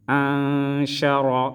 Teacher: نون میں اخفا کریں گے اور را کو موٹا پڑھیں گے